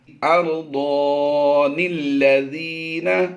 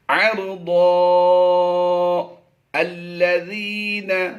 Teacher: اس نون کو اس لام کے ساتھ ہم نے ملا کر پڑھ دینا ہے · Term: وصل